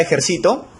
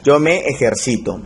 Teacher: Que es una palabra grave porque su sílaba tónica es la penúltima